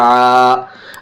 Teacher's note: الف سے پہلے زبر ہے، الف مدہ ہوگی، الف مدہ کو تھوڑا کھینچ کر پڑھیں گے